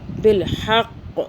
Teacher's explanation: قاف پہ قلقلہ کرنا، یعنی کہ جھٹکا دینا ہے رکنے کی صورت میں، کیونکہ قاف جو ہے قلقلہ جھٹکے کا حرف ہے۔